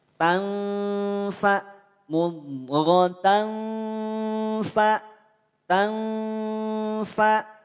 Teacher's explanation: Mudghatan, ada nampak jelas tanwin fathah. Tapi saat dia bertemu dengan huruf fa, maka tanwin fathah yang semula dia jelas maka menjadi samar. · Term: ikhfa